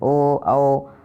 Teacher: कंठ और ओंठ से मिलकर इनका उच्चारण होता है। ऐसे है कि ओ तो गले से आवाज़ आती है और आगे होंठ हमारे सिकुड़ जाते हैं, ओ आओ, तो ये कंठोष्ठम।